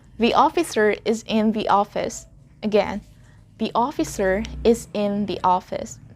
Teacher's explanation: we inserted the Y sound there between the and O. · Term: blending